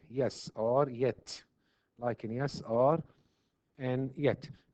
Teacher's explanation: Pure, when we say pure, it means that the tongue touches or gets very close to the hard palate alone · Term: pure palatal sound